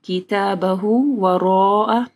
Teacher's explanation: من اوتی کتابہ وراء ظہرہ، کتابہ وراء، را کو موٹا پڑھنا ہے، مد ہے، اس کے بعد حمزہ ہے تو 4 سے 5 حرکات کے برابر اس کو لمبا کرنا ہے